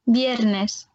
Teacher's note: il va se prononcer comme un R roulé dans la bouche, mais pas trop fort.